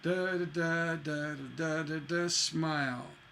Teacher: we had a stress landing on the last syllable